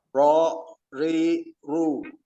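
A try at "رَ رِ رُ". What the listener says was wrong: Ro, ri, ru. Masih bergetar itu. Ro, ri, ru.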